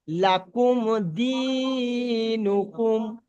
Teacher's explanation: দাল ইয়াজের দি, এখানে ইয়া মাদ্দা, সেই জন্য টান দিচ্ছি।